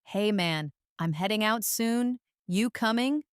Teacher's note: Notice the dropped G in heading and coming and the use of casual phrases.